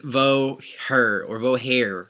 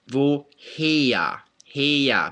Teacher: The second part is spelled H-E-R, but this always causes problems for native speakers of English when they read this, especially American speakers, because we want to read it as vo her or vo hair, right? But there is no r sound in German, so here it's vo heya, heya. Maybe I'd spell it like H-E-Y-A, heya, right?